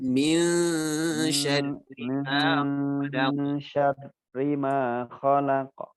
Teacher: itu disamarkan ya, nun bertemu dengan sya ya.